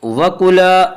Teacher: وَزَوْجُكَ الْجَنَّةَ وَكُلَا الف مدہ، الف ہمیشہ مدہ ہوتا ہے، الف سے پہلے زبر ہوتا ہے، الف مدہ کو 1 الف کے برابر کھینچ کر پڑھیں گے